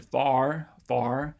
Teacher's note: to me it sounds more back than front